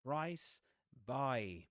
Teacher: by has the price vowel sound, right? The diphthong.